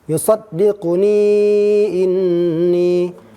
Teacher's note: bukan lagi mad tabi'i tapi mad jaiz munfasil menjadi 4 atau 5 harokat